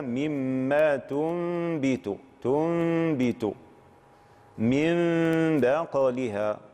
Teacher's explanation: فالنون الساكنة جاء بعد حرف الباء، ولذلكم ستجدون في ضبط المصحف ميما صغيرة فوق النون، إشارة إلى أن هذه النون ستنطق ماذا؟ ميما مخفاة بغنة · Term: القلب